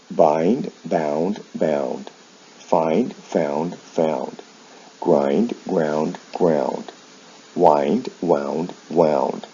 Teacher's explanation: and you'll see the sound shifts here with verbs like find they involve a vowel change in the past and the past participle from i to ow the consonant sounds remain the same